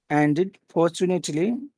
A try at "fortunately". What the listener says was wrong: that's very good that's really good the way you're doing that